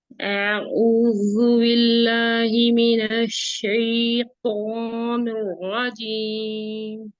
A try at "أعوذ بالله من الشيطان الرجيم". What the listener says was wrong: آپ کا جو کسرہ ہے وہ خالص کسرہ خالص کریں. اعوذ، با کے نیچے کسرہ ہے نا. بی مخرج پہ جائے تو اعوذ باللہ من الشیطان الرجیم.